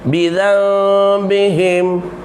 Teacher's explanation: Tukarkan bunyi nun kepada bunyi mim ringan. Tukarkan bunyi nun kepada bunyi mim ringan, ya. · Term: iqlab